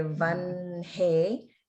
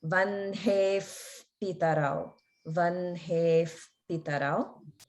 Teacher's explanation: the H and the N get pronounced in the opposite order. So we say vanhe, and then the visarga comes in front of the pa sound.